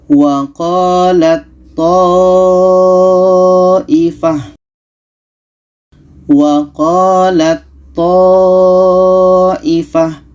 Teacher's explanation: maka Ta ini kita masukkan ke tho